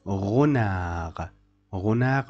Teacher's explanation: D at the end of the word is not pronounced.